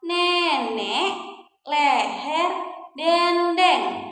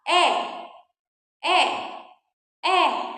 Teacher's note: kita juga punya ya bunyi e madya bawah depan